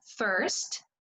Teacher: Otra cosa importante mencionar aquí, cuando hay una diferencia entre el inglés americano y británico, ¿sí? La vocal es la misma, pero en inglés americano nosotros vamos a pronunciar la R y vamos a decir first